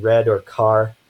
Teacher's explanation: we have the central alveolar approximant that is represented by this upside-down R